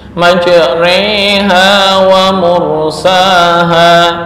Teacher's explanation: condongnya harokat fathah ke kasroh. Jadi dibaca fathah juga enggak, kasroh juga enggak ya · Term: imalah